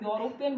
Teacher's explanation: जब हम यूरोपियन बोलते हैं तो साउंड किसकी आती है, य की आती है, वोवल की साउंड नहीं आती